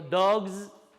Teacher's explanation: si digo perro, dog, esa es sonora, y digo dogs, la S es sonora